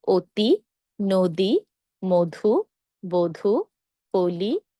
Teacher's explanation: শব্দের শুরুতে যদি অধনি থাকে তারপর যদি রসইকার থাকে তাহলে অ এর উচ্চারণ হবে ও এর মত